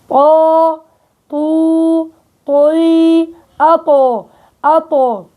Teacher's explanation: نتيجة ارتفاع أقصى اللسان أو وسط اللسان، فبصير هيئة التفخيم